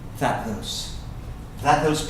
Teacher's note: the T and the TH are going to run together. And so that T doesn't even sound.